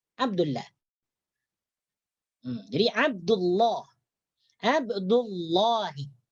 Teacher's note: tebalkanlah huruf lam min ismillahi yang terdapat dalam kalimat Allah.